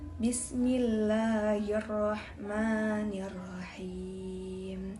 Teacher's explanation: Dalam surah dalam ayat pertama terdapat huruf ba makhrajnya dua bibir dan terdapat sifatnya jar, syiddah, istifal dan qalqalah. Dan huruf sin makhrajnya ujung lidah dan gigi atas. · huruf mim makhrajnya dua bibir sifatnya jar tawasud istifal dan ghunah atau wajib dengung